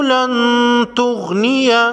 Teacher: نون ساکن پر اخفاء حقیقی ہوگا، اس کے بعد حروف اخفاء میں سے تا ہے۔